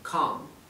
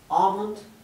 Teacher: La A se pronuncia entre una A y una O y la L no se pronuncia.